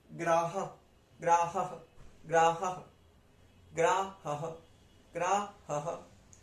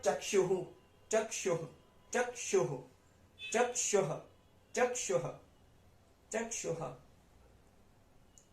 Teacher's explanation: विसर्ग जो होता है उसकी भी वॉइस जो होती है वो थोड़ी थोड़ी आधा ह के जैसे होती है।